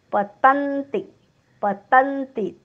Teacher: तवर आघात, डोक्यावर हलंत न, जोडाक्षराचा पहिला अर्धा भाग. पतन्ति. तिन्ही अक्षर ऱ्हस्वच आहेत. तवर जोर आहे.